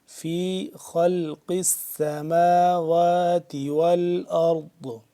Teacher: قاف کے نیچے زیر، قاف موٹا کر کے پڑھیں گے